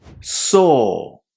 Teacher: it's definitely worth practicing saying the long O when there is an AW ending there